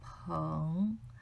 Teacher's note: Remember, second tone, lower your starting point, 朋, and make your end point high.